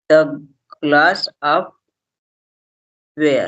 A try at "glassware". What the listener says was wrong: Glassware. Glassware. Glassware. Where नहीं बोलना है. Where नहीं बोलना. Glassware.